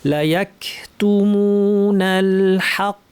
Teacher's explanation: হা পাতলা কফ ভারী, লা ইয়াকতুমুতে টান আছে, লা ইয়াকতুমুনাল হক, কতে টান নাই, হাক ওয়া হুম ইয়ালামুন, পুরাটা পড়ি একটু দ্রুত।